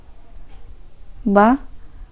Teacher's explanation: स्पर्श अल्पप्राण भी होता है घोष भी होता है और निर अनुनासिक भी होता है ऑप्शन नंबर बी इसका राइट